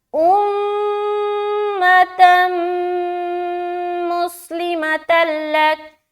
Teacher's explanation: ادغام تو ہوگا لیکن غنہ نہیں ہوگا، بغیر غنے کے ادغام ہوگا